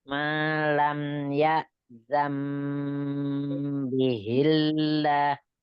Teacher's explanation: Malam ya itu mim sukun ketemu dengan ya-nya dialirkan tapi jelas ya.